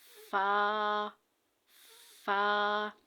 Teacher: ہمارے اوپر والا جو دانت ہے وہ نیچے والے ہونٹ پہ ٹچ ہوں گے تو یہ فا ادا ہوگا